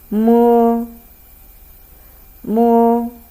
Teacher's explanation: So when you want to pronounce this initial, you close your lip, bring your tongue a little backward in your mouth, so let the air actually flow out of your nose.